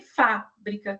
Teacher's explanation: fábrica, que é a primeira sílaba que é considerada como tônica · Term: sílaba tônica